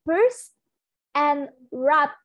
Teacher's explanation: the obstruction is created using both the upper and lower lips. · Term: bilabial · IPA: /p/